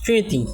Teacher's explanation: এটা নাসিক্য রূপে হচ্ছে স্মৃতি, একটু নাকের মধ্যে একটু বাজিয়ে